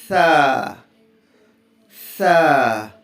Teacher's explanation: نوک زبان اوپر کے دانتوں کے گیپ میں ٹچ کریں گے تو ادا ہوگا